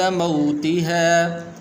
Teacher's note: موتها یہ واو حروف لین میں سے تو اسے لمبا نہیں کریں گے